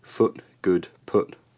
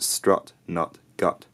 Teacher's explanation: in my accent, foot, good, put all have one vowel, but strut, nut, gut have a different vowel. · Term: foot, strut, split